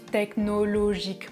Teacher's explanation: personally I pronounce technologically with the sound [ã]